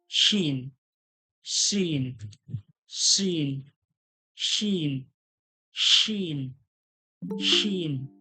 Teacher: হালকা সিটির মতো উচ্চারণ হবে, জিভের মাঝখান ওর সোজাসুজি তালু থেকে চেপে বলতে হবে শিন। জিভের মাঝখান ওর সোজাসুজি তালু থেকে হালকা চেপে বলবেন শিন, শিন, শিন, শিন, শিন, শিন।